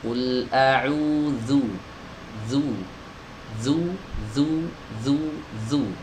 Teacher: Dalalah huruf yang keluar dari ujung lidah ee bertemu dengan ujung-ujung gigi seri atas ya. dan digesekan, ya digesekkan dengan tekanan yang ee sedang saja ya. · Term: huruf dalal